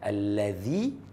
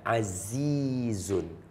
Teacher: Allazi keluar, kalau azizun lidah kat dalam.